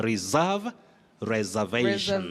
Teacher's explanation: S takes the voiced sound Z.